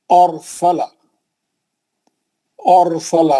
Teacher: और सला कैसा पढ़ेंगे, और रा को पावर कौन दे रहा है, अलिफ पे का जबर दे रहा। और सला रा साकिन है, लेकिन उससे पहले वाले हर्फ पे जबर है, इसीलिए उसको मोटा पड़ रहा है ना। उसी जमीन में और एक बता दूं, युरसला, इत्तेफाक से आ गया वो।